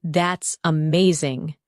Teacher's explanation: When you say, That's amazing, your tone rises with excitement. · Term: rising tone